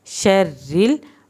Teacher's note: रा को आपने पतला पढ़ना है क्योंकि रा के नीचे ज़ेर है तो रा पतला पढ़ा जाएगा